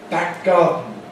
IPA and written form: ˈbæk̚ ˈgɑːdn̩ (back garden)